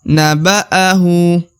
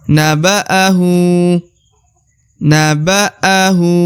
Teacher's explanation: atau kata na Perhatikan ya perhatikan huruf hu ya Naba kemudian hu dibaca Dua harakat karena di atasnya terdapat harakat u Terbalik